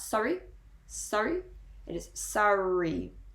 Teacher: have the double r sound you do pronounce both r's [Music] they do kind of merge together so it is not so obvious that you are pronouncing both of the r's but they are still there